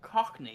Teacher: They have to put so much emphasis on the first bit of that word. The first syllable.